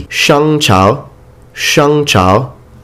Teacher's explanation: Please notice that the G is not pronounced in Chinese when it follows an N.